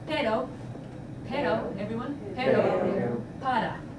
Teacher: And so if you could get them right away, get them to understand that the single R, when it's preceded by a vowel, sounds like the English double D.